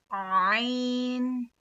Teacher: हलक के मतलब गले के दरमियान वाला हिस्सा मतलब बीच वाले हिस्से से ऐन अदा होता है। · حلق کے مطلب گلے کے درمیان والا حصہ مطلب بیچ والے حصے سے عین ادا ہوتا ہے.